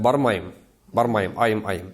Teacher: у нас же говорят в татарском языке «ый», а в мензелинском говоре мы используем «ай» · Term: дифтонг